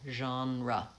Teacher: So the vowel is vowel genre, and then the second vowel is schwa. Stress is on the first syllable